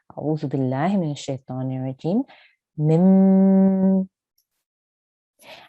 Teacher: let me show you an example this would be m and you can feel the air coming from your nose when you say that sound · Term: sustained nasal sound